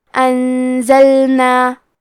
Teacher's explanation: کلمت وانزلنا میں نون ساکن ہے پھر حرف زے ہے، یہاں بھی حکم ہے اخفاء، تو ہم یہ حکم کو غنہ کے ساتھ ادا کریں گے